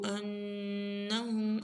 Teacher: ان کے اوپر غنہ ہم کے اوپر غنہ